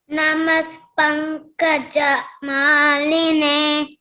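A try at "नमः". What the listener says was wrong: Namaf, you should say, not namas. Namaf.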